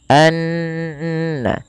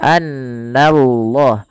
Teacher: Na tipis, Allahnya baru ditebalkan. Di sini kita namakan dengan lam tafkhim.